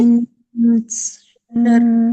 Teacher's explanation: اب یہ جو آپ نے من پڑھا نا، نون پورا پڑھا نا، تو اس میں نون کو پورا نہیں پڑھیں گے بلکہ نون کی آواز کو چھپا لیں گے